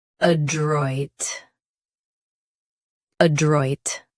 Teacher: Both US and UK have the same pronunciation of this word. Stress droit. Keep a very light.